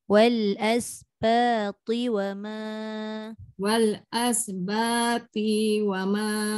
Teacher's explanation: Jaga ba panjang, ti pendek.